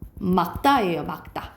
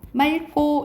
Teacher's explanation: 리을 기역 뒤에 기역이 오면 리을로 발음나는 거야